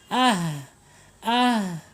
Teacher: Ha ini mempunyai sifat alhams mengalirnya napas kita ya Ah Ah Bah tah ya mengalir ya napas kita mengalir